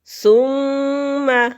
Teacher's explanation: ثم میم مشدد پر غنہ ہوگا